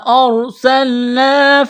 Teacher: الف سے پہلے زبر ہے، حروف مدہ الف ہے، ایک الف کے برابر کھینچنا ہے